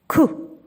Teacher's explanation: Так, твердий, приголосний, глухий. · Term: звук К